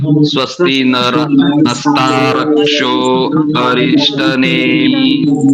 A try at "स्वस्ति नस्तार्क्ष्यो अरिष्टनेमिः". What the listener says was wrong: कई लोगों का उच्चारण नस्ता रक्ष्यो नहीं करेंगे, रक्ष्यो नहीं, जो क्षा है वो आधा है, नस्तार्क, नस्तार्क्ष, नस्तार्क्ष्यो ऐसे